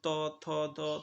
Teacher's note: আমাদের জিহ্বার যে ডগাটা সেটা উপরের দাঁতের যে পাটি আছে সেই দাঁতের মধ্যে লাগে যেমন ত থ দ তুমি উচ্চারণ করলেই দেখতেছো তোমার জিহ্বাটা কোথায় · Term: দন্ত ব্যঞ্জন